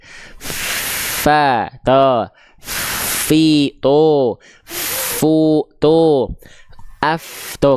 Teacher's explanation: huruf Fa di saat yang sama suaranya mengalir